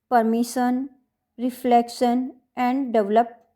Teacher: in other trisyllabic words like permission, reflection and develop, the accent is placed on the second syllable